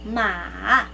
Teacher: So your voice will fall down, but it will eventually go up. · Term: third tone